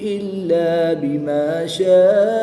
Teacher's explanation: الف مدہ کے بعد حمزہ اسی کلمے میں ہے تو یہاں پر مد متصل ہوگی. 3 سے 5 الف تک کھینچ کر پڑھیں گے